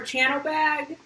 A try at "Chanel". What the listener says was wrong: You couldn't read the name right. Instead of Chanel, you pronounced it Channel.